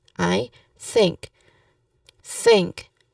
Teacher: the version of TH sound is voiceless because it is soft. It is not using your throat.